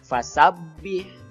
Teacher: Di situ ada huruf ba berharokat tasydid, ya. Jadi ba-nya harus ditahan dulu. Kemudian ha sukun, ha-nya ha kecil, ya, bukan ha besar.